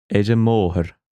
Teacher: the singular article is just pronounced as an unstressed vowel